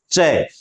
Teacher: च की ध्वनि निकलने से पहले हमारी जीभ हमारे तालू के जाकर चिपक जाती है और जब वहां से वापस नीचे गिरती है तब च ध्वनि का उच्चारण होता है इसी को कहते हैं श्वास वायु में बाधा